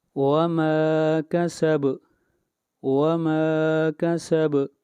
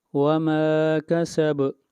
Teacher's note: با کے اوپر قلقلہ، با کے اوپر آواز کو ہلائیں گے